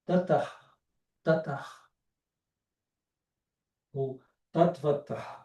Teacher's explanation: O último som é surdo, que é o Visarga, esse H com pontinho embaixo